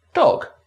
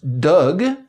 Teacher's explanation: If we say the English word dog after a period of silence, for example, we get dog with two semi-voiced or devoiced consonants. Contrast this with a similar French word, dogue, meaning mastiff, and we get two fully voiced consonants.